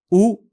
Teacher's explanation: उ इस स्वर के उच्चारण में फेफड़ों से आने वाली हवा बिना किसी रुकावट के मुंह से बाहर निकलती है। होठ गोल रहते हैं और जीभ मुंह के पीछे और ऊंची स्थिति में रहती है। यह हरस्वल स्वर है। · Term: ह्रस्व स्वर